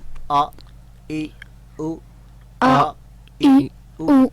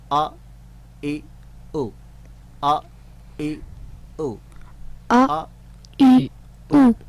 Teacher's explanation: حمزہ کی آواز کو ہم پریکٹس میں لا رہے ہیں, جس کا تعلق اقصی حلق سے ہے